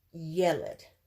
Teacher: The accent's towards the beginning of the word.